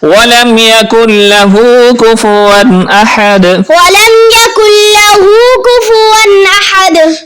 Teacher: ہو کو تھوڑا سا ایک الف کی مقدار کے برابر کھینچیں گے، لمبا کریں گے، کیونکہ الٹا پیش اور جو عام پیش ہوتا ہے اس میں فرق یہ ہوتا ہے کہ عام پیش کو ہم کھینچ کر لمبا کر کے نہیں پڑھتے، اور الٹا پیش کو ہم ایک الف کے برابر کھینچتے بھی ہیں۔